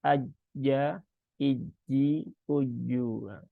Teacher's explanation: huruf jim itu dia kan letaknya ada di tengah lidah, langit-langit atas ya. Maka aja, iji, uju, bukan aja.